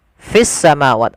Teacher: Idgham itu memasukkannya langsung ke huruf sinnya, maka menjadi fis samawat. Awalnya al samawat, karena dia sin termasuk huruf syamsiyah, ya maka dia harus dimasukkan dan ditasydidkan.